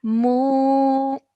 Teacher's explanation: we're starting with the sound of mu and stretching for 2 seconds.